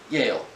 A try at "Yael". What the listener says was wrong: No, it's not Yale. It's E-L.